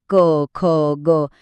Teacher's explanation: क वर्गातले ध्वनी क, ख, ग हे घशाच्या मागून येतात. म्हणून त्यांना म्हणायचं कंठ्य.